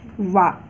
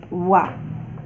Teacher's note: वह वा का उच्चारण स्थान है दंतोष्ठ।